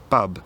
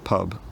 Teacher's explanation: English speakers produce a little puff of air after a p sound if it comes at the start of a stressed syllable, a Spanish speaker might read this word as bub rather than pub.